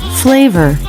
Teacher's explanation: lip goes to the bottom of the top Front Teeth flavor the bottom lip goes to the top front teeth for the F and again for the V